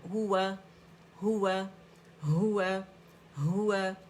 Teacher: اقص الحلق سے ہا ہے